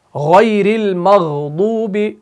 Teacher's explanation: ترقیق نہیں، تفخیم پائی جاتی ہے۔ غین اور خا جو ہے ان کے اندر تفخیم پائی جاتی ہے، اور ہم یوں کہہ سکتے ہیں کہ یہ حروف مستعلیہ میں سے ہے۔